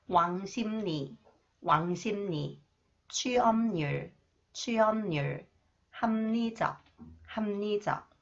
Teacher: Okay, when 리을 comes after the final consonants 피읍, okay, 리을 is pronounced 니은, and 피읍 influenced by 니은, it is pronounced 미음.